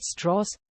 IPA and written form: ˈstrɔːz (Strauss)